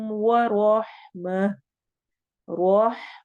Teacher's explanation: रॉ को मोटा पढ़ना है और आगे हा से मिलाना है।